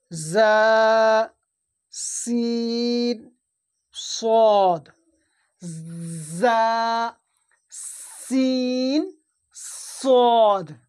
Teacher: সেটা হলো কি, জিবের আগা এবং সামনের উপরের দুই দাঁতের আগা, এই দুই দাঁত, সামনের উপরের দুই দাঁত, নিচের দুই দাঁত, জিবের আগা এবং সামনের উপরের দুই দাঁতের আগার সাথে লাগিয়ে উচ্চারণ হয়। ধরে নিন এটা জিব, এটা সামনের উপরের দাঁত, এটা নিচের দুই দাঁতের মাথা, এই দুই দাঁতের মাথায় লাগাতে হবে এই জিব।